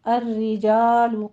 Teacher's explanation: الرجال میں را مرقق پڑھی جائے گی، تشدید والی ہے، کسرہ والی